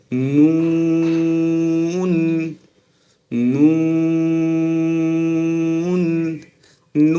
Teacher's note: ঠোঁটকে যতটা গোল করে পড়া যায় ছোট্ট একটা ছিদ্র হবে নুন নুন নু বলার সময় কোথায় লাগবে জিবার আগা তার বরাবর